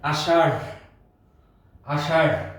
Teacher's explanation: র এবং একটি হ অথবা এইচ, এই দুইটা সাউন্ড শেষে হবে। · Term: মহাপ্রাণ